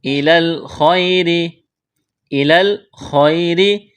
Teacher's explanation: إِلَى الْخَيْرِ، إِلَى الْخَيْرِ، خایا زبر خی را زیری، یا لین ہے، اس کو کھینچنا نہیں ہے، را کو باریک کرنا ہے